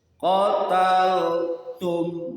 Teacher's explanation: Syafawi huruf antara dua bibir. Jadi mingkem dulu. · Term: izhar syafawi